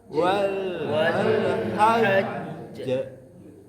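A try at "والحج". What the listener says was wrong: Tahan sedikit lagi Pak. Wal hajj.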